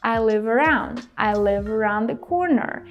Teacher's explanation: I feel like the guy in the TV show drops the D sound